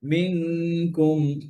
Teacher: মিনকুমের কাফের গুন্না মোটা হবে না, পাতলা হবে